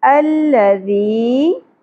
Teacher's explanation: یا ساکن حرف مدہ ایک الف کے برابر کھینچیں گے